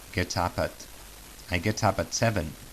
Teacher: These three words, get up at, sounds like one single word. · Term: linking